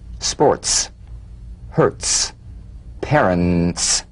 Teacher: Feel a crisp, percussive hiss between the tip of the tongue and the teeth.